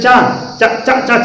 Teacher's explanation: तो कहाँ जीभ, हमारी जीवा कहाँ लग रही है? तालु में।